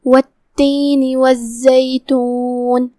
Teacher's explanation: کلمت والتین میں یہاں ال شمسیہ ہے تو ہم یہاں لام کو ظاہر نہیں کریں گے. یہاں تا پہ جو کہ تشدید ہے، لہذا ہم تشدید کو ظاہر کرتے ہوئے 2 حرف کے مقدار میں تا کو پڑھیں گے.